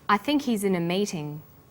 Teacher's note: the word think is stressed in this sentence and his is unstressed when these words are linked the her is dropped in spoken